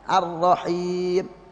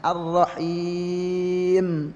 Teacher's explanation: Mim ini adalah memiliki sifat apa gunnah di hidung, sehingga ketika waqaf pun itu habisnya di hidung. Ya. Jadi langsung pet misalnya Ar-Rahim.